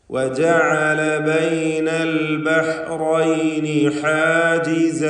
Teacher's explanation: ഹ തൊണ്ടയുടെ മധ്യം, നേരത്തെ ഐന് പറഞ്ഞ അതേ മഖ്റജ് തന്നെ വ്യക്തമായി ഉച്ചരിക്കുക